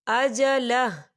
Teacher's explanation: وقف کی صورت میں ہا جو ہے وہ ساکن ہو جائے گا